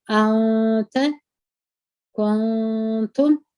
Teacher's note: نون وي که د پیشو وي که د زیرو نون وي اخفا کوو یې په غونه کې پټوو د دوه حرکاتو په اندازه